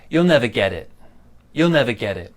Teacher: you'll never, small stress there, and then big stress on get it.